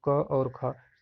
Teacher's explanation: जो क वर्ग है उसका उच्चारण हम कंठ से करते हैं। तो क वर्ग का मतलब क और ख कंठ से होते हैं।